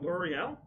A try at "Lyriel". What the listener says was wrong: It's Lyria. It's Lyria. L-I, not L-E-O. And it's also I-E-L, and I don't know how L'Oreal